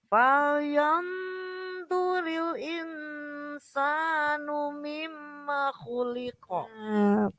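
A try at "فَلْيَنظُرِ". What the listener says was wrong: Sudah benar panjang pendeknya, tinggal PR-nya apa? Vo-nya masih belum dapat, masih falyanduril. Falyanzu. Vo. Vo vu bau. Vu digigit. Du digigit sedikit ujung lidahnya.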